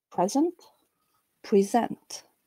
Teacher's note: In the verb, there is a rise towards the stressed syllable with a relatively steady downdrift following it.